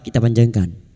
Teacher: bertemunya mad dengan huruf hidup yang dibaca wakaf mad arid lukun empat harakat kita panjangkan